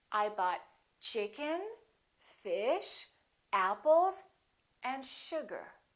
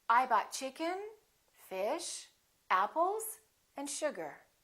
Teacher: when you have that Rising intonation people know that that's not the last element something more is coming